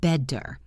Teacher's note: In American English especially, when a T is between two vowel sounds, it often changes into a soft DD sound. This is called the flap T.